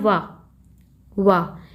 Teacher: इसका उच्चारण दंत्योष्ठ से किया जाता है। दांत प्लस ओष्ठ यानी कि ओंठ का प्रयोग किया जाता है